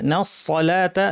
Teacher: নুন পাতলা সাদ ভারী লাম পাতলা